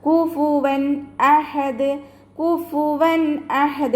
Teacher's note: തെൻവീനിലുള്ള നൂനിനെ ഇൽഹാർ ചെയ്തിട്ട് വ്യക്തമാക്കിയിട്ടാണ് നമ്മൾ അവിടെ ഉച്ചരിക്കുക